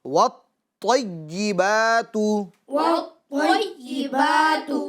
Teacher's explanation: اس کے اندر بھی یہی خیال رکھنا میں کہ طا کو پور بھی کرنا ہے، مشدد بھی پڑھنا ہے، اور اس کے اندر جماؤ کرنا ہے، یعنی تھوڑا رکنا ہے، تھوڑا ٹھہرنا ہے